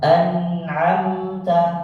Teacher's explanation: Izhar jelas tidak boleh berdengung